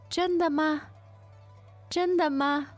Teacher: the tone there is a first tone first and neutral